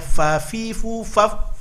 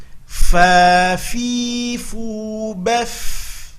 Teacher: hati-hati nampakkan mengalir nafas ketika membunyikan, karena ada sifat hamaz pada huruf fa